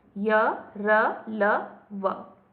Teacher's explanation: अंतः का अर्थ होता है मध्य में या भीतर, अंदर की ओर। इसका उच्चारण करते समय जीभ मुख के अंदर ही होती है और किसी विशेष स्थान को नहीं छूती। ये 4 हैं, य, र, ल, व। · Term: अंतःस्थ व्यंजन